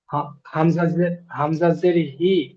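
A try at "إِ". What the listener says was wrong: হামসা। হা- জি, হামজাজের হি নয়, হামজাজের ই। ই। উপরে যে আইনের উপরে সাবার এসছে হারাকাত, এখানে হামসার নিচে জের এসছে, জেরটি হলো হারাকাত। হারাকাতের পড়াকে তাড়াতাড়ি পড়তে হবে, টান দেওয়া নিষেধ।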